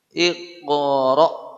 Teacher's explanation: Dan hamzah sukun bacaannya menghentak.